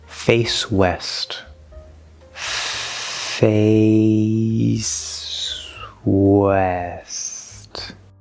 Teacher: it's just an s sound it's actually going to connect over to the w